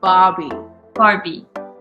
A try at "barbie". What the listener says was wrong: Not like the doll, but just Barbie. Instead of saying Barbie, like don't pronounce the R, just say Barbie.